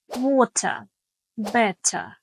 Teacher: British speakers will often pronounce a clearer T sound.